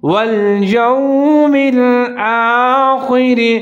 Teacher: خا کو آپ نے موٹا کر کے پڑھنا ہے، را کو آپ نے باریک پڑھنا ہے کیونکہ اس کے نیچے زیر ہے